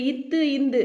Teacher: இது மேல்வாய் பல்லோட அடியை நாக்கோட நுனி பொருந்துறதுனால பிறக்குது